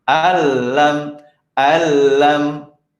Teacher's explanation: Jadi di sini nun tidak terbaca, langsung masuk ke lamnya. Ya, kalau tadi kan nun nggak ada tandanya, ya bertemu dia tidak bertemu huruf bertasydid, maka apa?